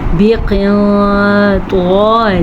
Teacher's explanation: قاف کے بعد نون قاف موٹا پڑھیں گے کیونکہ حروف مستعلیہ میں سے ہے. نون ساکن کے بعد طوا ہے جو کہ حروف اخفا میں سے بھی ہے تو ہم نون ساکن کو چھپے ہوئے غننے کے ساتھ پڑھیں گے.